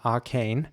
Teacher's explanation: the a is a bit longer in British English in my opinion